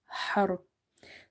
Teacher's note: So ra is silent as well as it's heavy because there is a fatha before it.